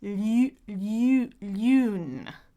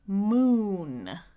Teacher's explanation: Notice how my tongue is forward for the French version 'lu' 'lu' 'lune'. But it's back for the English one 'moon'.